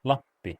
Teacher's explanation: a voiceless bilabial nasal